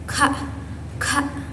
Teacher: huruf kaf ini keluar dari pangkal lidah dengan langit-langit lembut. Nah, huruf ini termasuk infijari dan bersifat mahmus.